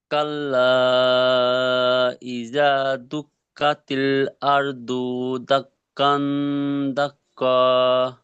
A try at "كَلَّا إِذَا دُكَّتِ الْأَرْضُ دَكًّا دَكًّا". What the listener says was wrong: মাশাআল্লাহ, আরো দু টান হয়ে গিয়েছে, দু টান হবে না, কারণ পেশ হারাকাত, তাই না?